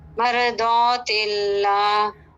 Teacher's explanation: را بھی پر ہے، را ساکن، ما قبل فتحہ ہے، ضاد بھی پر ہے